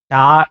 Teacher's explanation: மேல் எண்ணத்தில் நாக்கு நுனி வருடுகின்ற பொழுது வருகின்ற சப்தம்